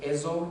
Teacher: observé la sonorización de sibilante en posición inicial de sílaba. Entonces aquí dice eso, en vez de eso.